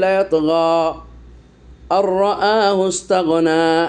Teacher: আর থেমে গেলে লায়াতগা আর রাআহু ইসতাগনা, হামজা রা জবর আর, এই যে নুন সাকিনের পর র এসেছে, ইদগামের অক্ষর, নুন সাকিনের ইদগাম, নুন সাকিনের পর র এসে ইদগাম হয়েছে, কিন্তু গুন্না হবে না